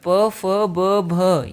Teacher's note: प फ ब भ ये सारे के सारे कैसे होंगे ओष्ठ ध्वनि के होंगे